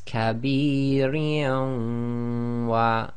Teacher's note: read the waw as if it's got a shadda, so it becomes, and again idgham with the waw is with ghunna, so it's kabirin wa.